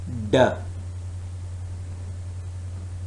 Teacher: Why it is alveolar? Because the narrowing of the vocal tract involves the tongue tip and the alveolar ridge